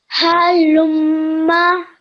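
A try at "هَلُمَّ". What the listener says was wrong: Well done, well done. One more go.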